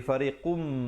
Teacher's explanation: Fariqum, di situ tanwin bertemu mim idgham bi gunnah masuk beserta dengung. Asalnya fariqun, tapi bila datang mim jadi fariqum, terus masuk di atas mim 2 harakat.